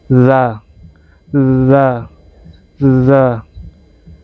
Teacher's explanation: Bukan za. Dia tidak bunyi Z, dia lebih ke antara D gitu.